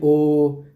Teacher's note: आपका देखिए होठ भी देखिए गोल हो रहे होंगे और कंठ में भी वाइब्रेशन कुछ हो रहा होगा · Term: कंठ ओष्ठ